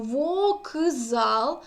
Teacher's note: дзвінкий вплинув на глухий к і к отзвінчився тобто фонетичній транскрипції ми пишемо до глухого к дзвінку для нього